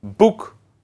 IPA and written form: bʊk (book)